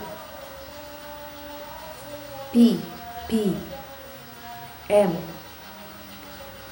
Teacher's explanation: huruf b itu dihalangi oleh dua bibir